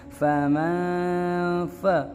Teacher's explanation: نون ساکن کی آواز کو ناک میں چھپائیں گے